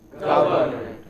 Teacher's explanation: Stressed on the first syllable.